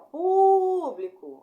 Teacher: E aí nós temos a proparoxítona, que é a antepenúltima mais forte